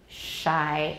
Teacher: the blade of the tongue is close to the back of the alveolar ridge so that's why we call it paluteau alveolar we could say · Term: post alveolar